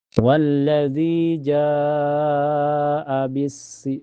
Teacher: Itu satu kata, "jaa". Dibaca panjang, selama 4 hingga 5 ketukan. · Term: Mad Wajib Muttasil